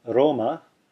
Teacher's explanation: here it's pronounced as the r in the Italian word Roma notice how I'm flipping my tongue against the roof of my mouth throwing the tongue up against the pallet of the mouth just